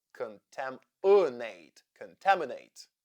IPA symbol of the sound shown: ə